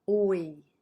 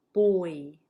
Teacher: You're moving your tongue. You're starting with O, but then you're going E